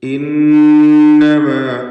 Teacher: ഖാലൂ ഇന്നമാ, ശദ്ദുള്ള നൂനിനെ മണിക്കണം.